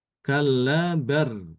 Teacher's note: Imam Sybah dia membaca tanpa saktah, yaitu dengan mengidghamkan lam sukun ini ke ro ya.